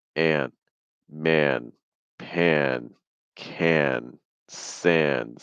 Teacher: that ah sound becomes more like an eh. And right before your N, you're going to do a heavy breath out of your nose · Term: A plus nasal sound